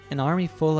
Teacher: she doesn't pronounce the letter F in of instead the entire word is pronounced as a schwa